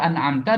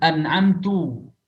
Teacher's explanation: Harakatnya fathah kok dibaca dhammah. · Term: taghyirul harakah